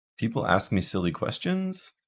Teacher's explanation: Although there is this new trend, if you listen to a lot of TikToks, where even regular statements will end on kind of a high tone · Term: non-terminal contour